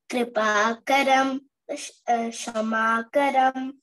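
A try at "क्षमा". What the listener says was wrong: Not shama, kshama. Shama is different, kshama is different. Kripa karam kshama karam ksha.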